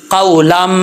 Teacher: یہاں پہ بھی ادغام یرملون ہو رہا ہے، تنوین کے بعد میم آ رہا ہے حروف یرملون میں سے، تو یہاں پہ ادغام یرملون ہے اور ایک الف کی مقدار جو ہے وہ غنہ کریں گے. جب لام کو میم سے ملائیں گے تو الف جو ہے وہ گر جائے گا